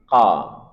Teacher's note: ada huruf qof dari pangkal lidah qo. Kemudian karena ini dhamah kita mencucu.